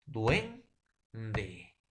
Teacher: U es una vocal cerrada y E es una vocal abierta.